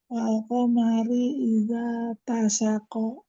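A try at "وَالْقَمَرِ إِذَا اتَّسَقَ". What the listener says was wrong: Ada ta yang bertasydid, maka tekan di huruf ta atau ditahan. Idzat tasaqa. Ulangi.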